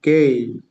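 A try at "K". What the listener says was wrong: আচ্ছা, এটা কেই না, আবার সরাসরি খেই, মানে ওরা ক উচ্চারণ করে না, হ্যাঁ খেই। এই, যেই, খেই।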